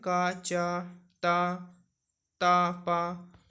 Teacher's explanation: तो एक चीज़ और यहाँ पे आप देखिए, जो भी यहाँ पे देखिए का, इन सभी का जो पहले सभी वर्गों का पहला वर्ण है, देखिए का, चा, टा, था, पा, ये सारे अघोष हैं और अल्प प्राण हैं। मतलब इनको जब आप बोलेंगे तो आपकी स्वर तंत्रियों में कोई भी कंपन नहीं होगा। आप बोल के देखिए और इनको बोलने में आपके मुख से कम हवा निकलेगी।